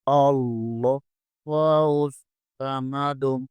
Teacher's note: صاد کو پر یعنی موٹا پڑھیں گے اور صاد حروف صفیریہ میں سے ہے، اس میں سیٹی کی آواز نکلے گی۔ اللہ الصمد، اور دال کو ساکن کریں گے اور دال پر کلکلا کریں گے۔